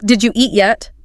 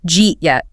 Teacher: nobody is articulating the D in did and the Y in you. It just collapses into jeet yet. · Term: assimilation